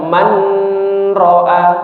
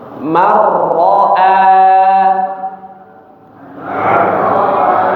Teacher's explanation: langsung dimasukkan ke huruf ra ya, tanpa dengung marro ya. Jadi seperti huruf ra yang bertasydid.